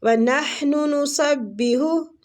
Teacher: نحن ہا وسط الحلق سے، نسبح یہ ہا بھی وسط الحلق سے